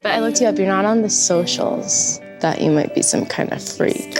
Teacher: Kind of gets connected and sounds like kinda.